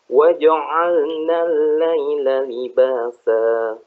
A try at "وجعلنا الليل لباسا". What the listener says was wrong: Si pengucapan A-nya waja'a, buka lagi A-nya tuh karena buka. Ja'a, sama dia, ulangi.